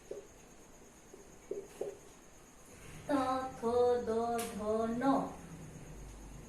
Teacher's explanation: यहाँ पर हम हमारे दांत की सहायता से बोल रहे हैं, इसलिए ये दंतव्य कहलाते हैं।